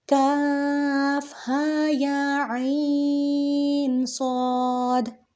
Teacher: میں نے کاف کو کھینچا ہے، عین کو کھینچا ہے اور صاد کو کھینچا ہے